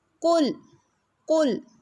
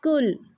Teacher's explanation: مثلا آپ پڑھیں قل لیکن آپ کے منہ سے نکل آئے کل، یعنی موٹے قاف کو آپ نے باریک کاف میں بدل دیا تو میننگز چینج ہو جائے گا. · آپ کی زبان کی جڑ اٹھے گی، اور اس وجہ سے حرف موٹا ہو جائے گا